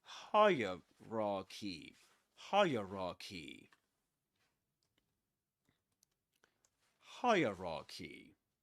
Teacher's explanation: we say hierarchy and the accented syllable is the first one.